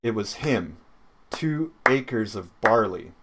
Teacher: the double stress on two acres makes it harder to pronounce that it doesn't fit in the rhythm because we have two